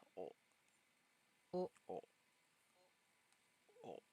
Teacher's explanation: O is pronounced like O in hope, but the sound is more front of the mouth.